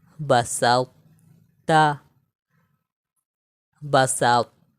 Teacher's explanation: ٹھیک ہے، یہاں پر دیکھیں طا کو موٹا پڑھیں گے تا کو باریک پڑھیں گے. طا کے موٹائی کو برقرار رکھتے ہوئے تا کو باریک پڑھیں گے اور طا میں ہم قلقلہ بھی نہیں کریں گے.